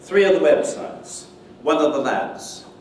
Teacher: But you can elide the F in these difficult sequences. Elision of V and of is very common, particularly before the, and makes it easier to say.